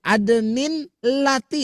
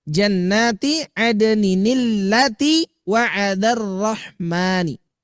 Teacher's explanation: kalau ada tanwin bertemu dengan hamzah wasal, maka di sini tanwin itu akan berubah menjadi nun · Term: nun wiqayah